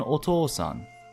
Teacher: O is similar in that it is typically followed by u, though it sounds like a long o